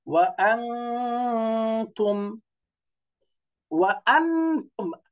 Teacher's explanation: নুন সাকিন তানবিনকে নাকের ভিতর লুকিয়ে ইকফা করে বাংলাতে অনুস্বারের মতো উচ্চারণ করে পড়তে হবে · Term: ইখফা